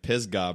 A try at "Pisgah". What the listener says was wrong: You don't pronounce it as an A, you pronounce it as a U. It's Pisgah.